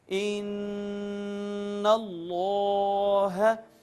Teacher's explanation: یہاں بہر صورت غنہ کریں گے یعنی ناک میں آواز لے جا کر گنگنائیں گے